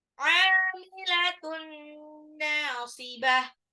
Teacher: Amilatun ainnya mat tabi'i 2 harokat. Amilatun tanwin ketemu nun itu idgham bi gunnah, jadi dilebur tapi ditahan 2 sampai 3 harokat ya biar terdengar gunnahnya itu di mana.